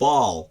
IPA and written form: bɑːl (ball)